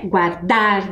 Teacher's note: a sílaba mais forte lá de guardar, que dá esse ritmo quando a gente fala, é o dar.